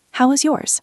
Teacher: The stress is on yours. How was yours?